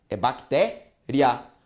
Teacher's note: Duas vogais juntas que na separação silábica permanecem juntas. E é um ditongo crescente, pois vai da semivogal, que é mais fraca, para a vogal, que é mais forte